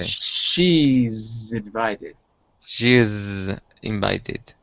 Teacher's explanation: First, there's the sh in the she, and then there's the z, which is between she and invited.